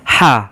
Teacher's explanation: Bila kita baca tu, kita seperti menahan pedas. Ha, geseran angin di kerongkong kita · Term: ha pedas